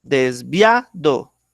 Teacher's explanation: el acento lo estoy poniendo en via